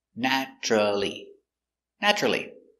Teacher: Four syllables, but we don't pronounce it with four syllables. We pronounce it with three. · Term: silent syllable